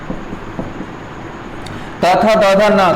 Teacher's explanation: त वर्ग त थ द ध न का उच्चारण स्थान दंतय हो जाएगा